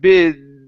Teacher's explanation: And then your your voice your vocal cords need to vibrate and then you move into the the Z sound, the voiced S there at the end